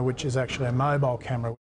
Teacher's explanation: This is linking type 1, vowel plus y plus vowel. Actually ends in an E vowel sound, and the next word begins with a schwa sound.